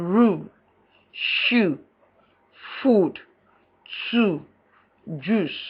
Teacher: Long U, back, close, tense, and rounded, as in rule, shoe, food, two, juice.